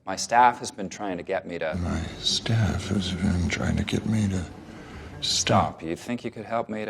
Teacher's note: the pauses the breaks don't come at the end of the sentence they come in the middle of the thought